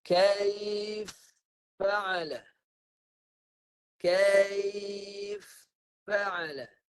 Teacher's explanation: Masukkan fa yang pertama kepada fa yang kedua. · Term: idgham kabir